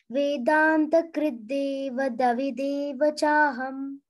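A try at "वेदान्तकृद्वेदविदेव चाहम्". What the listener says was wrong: One da you are extra pronouncing. Vedanta kridde davi. Deva chaham. Vedanta kridde. Krid. Vedanta Krid.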